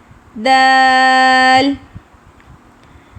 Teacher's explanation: They both have a same مخرج. جب زبان کی نوک اوپر والے سامنے کے 2 دانتوں کی جڑوں سے لگے گی تو دال ادا ہوگا, لیکن اس میں ایئر فلو بالکل بھی نہیں ہے, ٹھیک ہے.